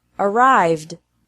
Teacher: it's also pronounced like d after verbs ending with a V sound